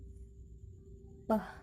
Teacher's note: The first sound is P. Place of articulation is bilabial. The manner of articulation is plosive. P sound include voiceless.